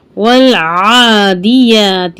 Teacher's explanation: عین ہے, حرف حلقی ہے, بس حلق سے نکلے گا